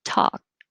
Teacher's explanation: you won't hear the k